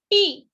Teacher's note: पी बोलते वक्त देखो बच्चों हमारे दोनों भी होठ जो है वो जुड़ जाते हैं, यानी वो कंप्लीटली ब्लॉक हो जाता है. हमारा माउथ जो है वो कंप्लीटली ब्लॉक हो जाता है.